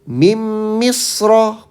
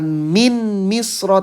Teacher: Nun sukunnya dileburkan atau dihilangkan.